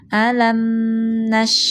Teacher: Huruf syinya dialirkan suara dan nafasnya · Dialirkan huruf mimnya bainiyah setengah antara syiddah dan rokhawah. Alam nash, huruf shinnya dialirkan suara dan nafasnya